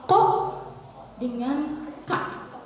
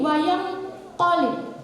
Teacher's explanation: paling belakang teman-teman, paling belakang lidah, hampir ke tenggorokan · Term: ikhfa abad